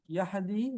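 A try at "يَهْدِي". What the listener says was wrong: یہدی ہا کو ہلائے نہیں، دی. یہدی ہاں نرمی، بھی نہیں کرے وہ دوسری ہا نہیں کر دینی، حلوے والی ہا نہیں ہے. یہ یہدی یہدی بہت آسانی والی ہا یہدی.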